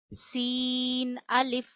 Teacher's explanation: सीन में सिटी की आवाज लाइए